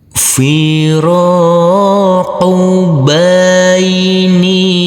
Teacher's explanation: Huruf nun yang berkasroh i ini bertemu dengan huruf ya sukun, maka dibaca panjang dengan panjang 2 harokat.